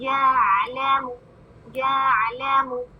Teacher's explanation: یا کو عین سے ملائیں، وسط الحلق میں عین، یعلم یعلم، لا 1 کاؤنٹ، منہ 1 کاؤنٹ.